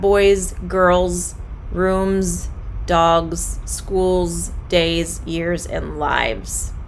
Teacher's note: the final consonant is voiced that means that you will have a z sound when you pronounce it